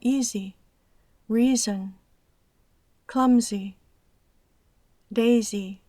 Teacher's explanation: es importante pronunciar ciertas palabras con el zumbido de la S sonora. Y eso es cierto cuando es parte de la palabra, como easy, reason, clumsy, daisy.